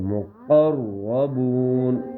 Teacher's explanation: قاف کو موٹا پڑھیں گے. ٹھیک ہے تاکہ وہ جو چھوٹا قاف ہے اس سے اس کی آواز کا فرق ہو جائے.